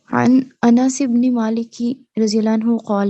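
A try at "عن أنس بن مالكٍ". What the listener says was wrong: ان انس بن مالکن، مالکن پڑھیں گے، تنوین آئے گی اس کے نیچے کیونکہ یہ غیر منصرف نہیں ہے.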